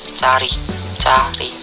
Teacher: Vokal A. Vokal belakang, rendah, netral, terbuka